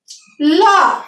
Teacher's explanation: ল যখন উচ্চারণ করি জিহ্বার দুই পাশ দিয়ে উচ্চারিত হয়, এই জন্য এটা পার্শ্বিক